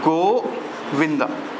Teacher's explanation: तो यहाँ पे जो हम गो को खींच रहे हैं, ठीक है, गो को क्या कर रहे हैं? खींच रहे हैं, उसके बाद विंदा बोल रहे हैं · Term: प्लुत स्वर